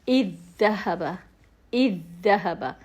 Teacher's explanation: دونوں کو ملا کر اس طرح پڑھیں گے کہ پہلا ساکن دوسرے متحرک میں مل جائے اور پہلے کی آواز ختم ہو جاتی ہے، ٹھیک ہے، ساکن کی آواز ختم ہو جائے گی۔ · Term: ادغام